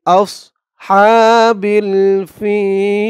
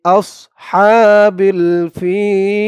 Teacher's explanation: এখানে অকফ করার কারণে জের পরে ইয়া সাকিন এক আলিফ টানটা তিন আলিফ টান হয়ে গেছে